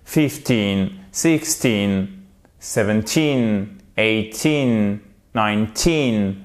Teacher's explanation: en fait on fait l'accentuation vous l'avez compris à chaque fois sur la seconde syllabes